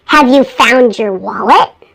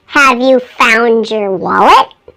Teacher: notice the D sounds like a j